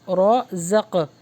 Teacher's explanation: یہاں پہ قاف کے اوپر سکون ہے تو یہاں پر کیا ہوگا؟ قلقلہ